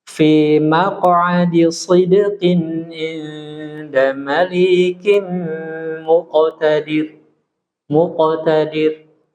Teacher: Ini qalqalah sugro. Walaupun suaranya tebal.